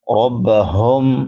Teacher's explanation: ربہم، را پر پڑی جائے گی کیونکہ را کے اوپر زبر ہے۔ ربہم بڑی ہا ہے، حلق کے آخری حصے سے جو سینے کے ساتھ ملا ہوا ہے وہاں سے ادا ہوتی ہے، اور اس کو اقصی حلق بھی کہتے ہیں۔